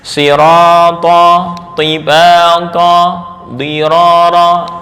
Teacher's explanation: huruf tafkhim yang berharokat kasrah, sirata, tibata, dirara, ini menurut tingkatan tafkhim adalah yang paling rendah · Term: Tingkatan nomor 5